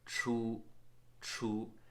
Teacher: as a retroflex the tip of your tongue wants to be up on your hard palate